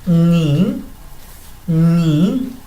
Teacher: Después, consonante, una vocal y otra consonante, ni, como que subo un poco al decir ni